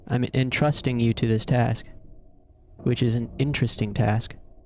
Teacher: Entrusting stresses the second syllable. Interesting stresses the first one. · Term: lexical stress